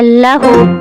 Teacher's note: ہا صرف سانس آواز کے ساتھ، ٹھیک ہے؟ نہ اس میں چھٹکا ہوگا حمزہ کی طرح اور نہ ہی بھاری آواز ہوگی ہا کی طرح